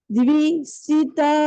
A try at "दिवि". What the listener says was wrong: இருங்க த்வி இல்ல திவி.